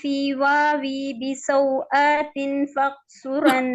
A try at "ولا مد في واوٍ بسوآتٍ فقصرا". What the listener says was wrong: واو دیکھیں واو کے نیچے بھی 2 زیر ہے آتن کے نیچے بھی زور ہے واو بھی واوی پڑھ دیتی ہیں ٹھیک ہے واوی نہیں واون ولا مد في واو بسوآت فقصرا